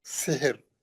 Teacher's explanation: रा साकिन है, उससे पहले वाला भी साकिन है, तीसरे हर्फ पे जेर है, रा पतली पड़ेंगे